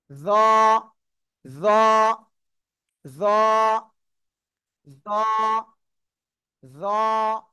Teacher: জিব্বার আগা, সবাই জিব্বার আগা, জিব্বার আগা 2 দাঁতের আগার সাথে লাগান, লাগান লাগান লাগান লাগান। জিব্বার আগা 2 দাঁতের আগার সাথে লাগান, লাগিয়ে উচ্চারণ করতে হবে।